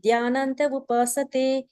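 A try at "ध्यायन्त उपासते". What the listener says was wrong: தியானந்த இல்ல, தியாயந்த.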